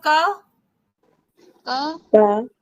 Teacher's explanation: क में जब हम बोलते हैं तो आ की ध्वनि बाद में निकलती है